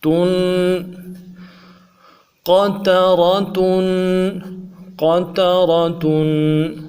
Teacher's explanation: قطرا قطرا، تا دو پیش تن، تن تنوین کو غنے کے ساتھ ایک الف کھینچ کے پڑھیں گے